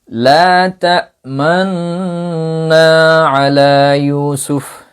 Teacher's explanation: গুন্না আপনি যখন শুরু করবেন, গুন্না যতক্ষণ করবেন ততক্ষণ আপনি ইসমামটা আদায় করবেন। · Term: ইসমাম মাআল গুন্না